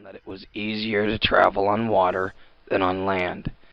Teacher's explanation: the voice does not sound particularly steady and perhaps it has a little bit of variability or perhaps noisiness to it